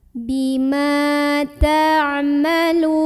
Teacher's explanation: Dibaca huruf mimnya panjang 2 harokat. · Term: mad tabi'i